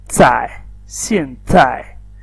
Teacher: putting a T sound, TH sound before pronouncing Z